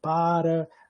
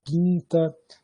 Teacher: uma plosiva bilabial desvozeada